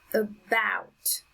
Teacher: On the second syllable, it's the strongest sound.